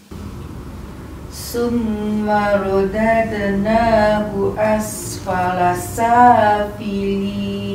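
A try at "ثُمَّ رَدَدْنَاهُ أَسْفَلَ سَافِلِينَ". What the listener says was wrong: Kalau boleh nipiskan huruf sa. Dia bukan sin, dia sa. thumma radadnahu asfala safilin.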